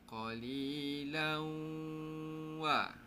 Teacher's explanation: Dengung bunyi huruf waw. Itulah cara dengung idgham ma'al-gunah.